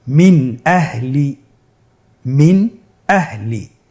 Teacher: তাহলে আমরা এখানে নুন সাকিনকে স্পষ্ট করে পড়ব, গুন্না ছাড়া পড়ব। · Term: ইজহার